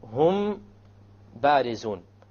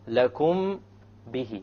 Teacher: when the meme is followed by a ba, you perform a ghunna, and that is called ikhfa shafawi.